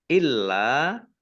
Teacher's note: lamnya dibaca dobel ada tasdidnya lam Fath Alif Mad thii tetapi karena bertemu dengan huruf alif